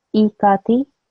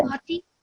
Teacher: when I say E and the ka and the T, they should be equally long. I have to make sure that this E is not any longer than this ka.